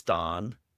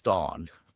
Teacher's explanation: Canadian English has that rounded vowel, the aw.